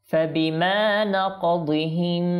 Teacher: জবর হবে না, কলকলা হবে শুধুমাত্র